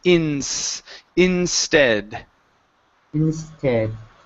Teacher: take out the extra vowel in between the N and the S.